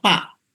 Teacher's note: ada kawan-kawan kita, saudara-saudara kita yang susah menyebutkan ya, fa. Tapi selalu yang muncul adalah pa.